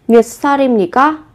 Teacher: Đối với từ này cũng thế, các bạn cũng gấp đôi phụ âm sờ lên